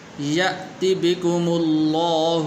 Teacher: لفظ اللہ کو پر کر کے پڑھنا ہے